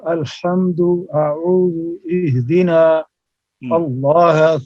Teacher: اور باریک پڑھ حمزہ کو الحمد میں، اعوذ میں، اہدنا میں، اللہ میں